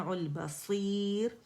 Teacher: بصیر میں را باریک پڑی جائے گی اگر ایسے وقف کرتے ہیں